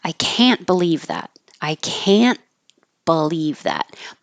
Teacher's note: but if it's negative now you'll hear the vowel a but you won't hear the final T